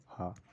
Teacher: कंठ भी है, महाप्राण भी है और घोष है। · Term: कंठ महाप्राण घोष व्यंजन